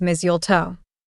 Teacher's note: The T in the middle is soft, almost like it's not even there.